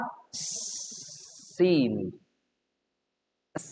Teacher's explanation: Supaya sin gak ketukar sama sin. Lidah ujung sejajar dengan gigi seri bawah. Ketika digeser ke lidah punggung, jadinya itu bukan lagi sin.